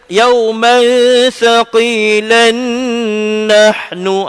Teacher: kalau kita start daripada yauman thaqilan nahnu, baru nun itu didengungkan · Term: idgham